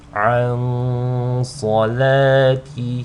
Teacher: you want to hold on to the nasal sound on the nun sakina for just 2 counts because of the sad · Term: ikhfa